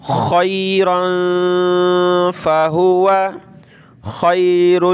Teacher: خیرا فہو، خا یا زبر خی، را دو زبر رن، تنوین کلرفل ہے، ناک میں آواز پیدا کریں گے. خیرا فہو، خا کی جگہ آپ نے خیرن، کھا نہیں پڑھنا، ٹھیک ہے، خا کو نکالنا ہے گلے سے